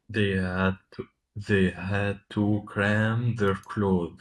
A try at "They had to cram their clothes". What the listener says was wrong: don't try to pronounce the th in that word. It's just close, like close the door. It sounds exactly the same.